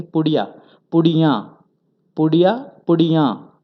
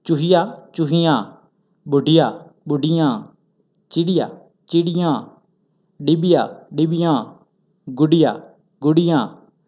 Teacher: ये एक वचन शब्द है पुड़िया, और जब इसे उच्चार में भी परिवर्तन होता है, जैसे कि पुड़िया पुड़ियाँ, पुड़िया पुड़ियाँ, थोड़ा सा अनुनासिक शब्द निकलता है चंद्रबिंदी के वजह से